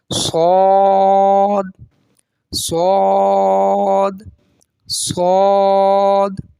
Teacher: یہ موٹا ادا ہوگا کیونکہ یہ حروف مستعلیہ میں سے ہے اور اس میں سیٹی بھی نکلے گی. یہ حروف صفیریہ میں سے بھی ہے.